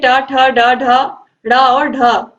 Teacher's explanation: जीभ तालु को या कठोर तालु को छूती है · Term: मूर्धन्य